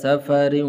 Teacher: را کے نیچے 2 زیر ہیں تو اس لیے اس کو باریک کر کے پڑھنا ہے